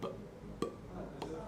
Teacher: Então seria algo como p, p, que é um oclusivo. Bilabial, porque envolve os dois lábios. Oclusivo, porque ele explode, ó. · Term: oclusivo bilabial desvozeado